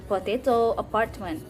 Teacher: the middle syllable is stressed in potato Apartment